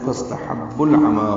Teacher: با کو لام سے ملائیں گے، اظہار قمری ہوگا. فاستحبوا العمى عین وسط حلق سے ادا ہوگا، میم کو 2 حرکات لمبا کریں گے.